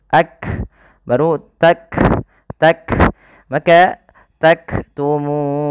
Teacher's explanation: Kemudian pada lafal taktumun, di sini huruf kafnya harus dalam pembacaannya tidak memantul, tidak taqtumun, tapi kaf memiliki sifat, salah satunya sifat syiddah, yaitu suara kita tertahan ak. Kemudian ada nafas yang dikeluarkan ketika melafalkannya, yang dimana kaf juga punya sifat namanya hamas.